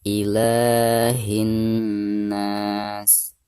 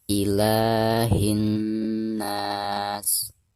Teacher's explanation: ketika kita mentasdidkan dari bacaan hi ke na, itu harus didengungkan atau digunakan 2 harokat karena di sini terdapat nun yang bertasdid yang merupakan huruf guna.